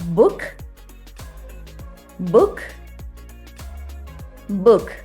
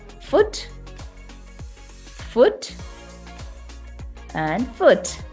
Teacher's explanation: o relaxed and quickly pronounced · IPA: /ʊ/